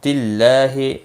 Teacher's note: اللہ کا لام باریک پڑا جائے گا زیر کی وجہ سے